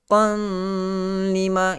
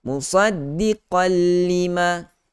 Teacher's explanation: Kalau idgham tanpa gunnah, musaddiqal lima, qaf tanwin itu, bunyi nun itu, bunyi tanwin itu terus dihazafkan, terus dibuang, terus tidak didengarkan kerana telah masuk secara total, secara sempurna ke dalam huruf lam yang kita kenali juga sebagai idgham kamil. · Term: idgham bila gunnah